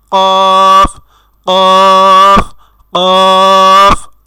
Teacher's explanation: তো আলাজিব্বাটি হলো জিব্বার গোড়া। তো জিব্বার গোড়া তার বরাবর উপরের তালুর সঙ্গে লাগাইয়া উচ্চারিত হয় 2 নক্তাওয়ালা কফ। আপনারা যদি আমার মতো এইভাবে কফ উচ্চারণ করেন তাহলে দেখবেন আপনাদের আলা জিব্বা আমাদের জিব্বার গোড়ার সাথে সংস্পর্শে আসছে বা টাচ হচ্ছে। · আপনারা যদি আমার মতো এইভাবে কফ উচ্চারণ করেন তাহলে দেখবেন আপনাদের আলা জিব্বা আমাদের জিব্বার গোড়ার সাথে সংস্পর্শে আসছে বা টাচ হচ্ছে। তো একটু এভাবে কফ না, আমাদের বলতে হবে কফ, কফ, কফ।